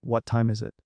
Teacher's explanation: But for wh questions like, What time is it? The intonation usually drops at the end.